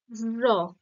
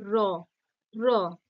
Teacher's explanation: জিভটা বা জিভের অগ্রভাগটা দন্তমূল স্পর্শ করছে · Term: কম্পিত ব্যঞ্জন ধ্বনি